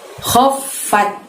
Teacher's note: Kho itu kita keluarkan suaranya dari tenggorokan bagian atas. Jadi seolah-olah ada yang bergerak, ada yang berjalan atau suara ngorok ya.